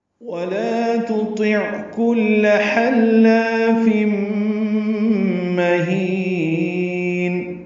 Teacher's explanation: تنوین کے بعد میم آنے کی وجہ سے ادغام ناقص غنہ ہوگا